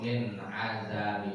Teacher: Min kalau izhar jelas nggak ada ditahan-tahan. Dia mah harus cepat-cepat buru-buru.